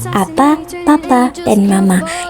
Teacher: vokal a dengan proses pembentukannya rendah pusat tak bundar